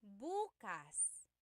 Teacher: If you say buas emphasis is on the first syllable that means tomorrow.